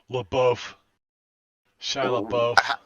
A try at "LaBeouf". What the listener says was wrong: Pretty sure that the F is silent.